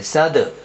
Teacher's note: دال کے اوپر جزم ہے اور دال حرف قلقلہ میں سے آ رہا ہے، اس لیے ہم قلقلہ کر کے پڑھیں گے